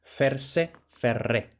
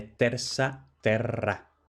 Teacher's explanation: esta R no es por rotacismo, que solo se da en posición intervocálica, sino por asimilación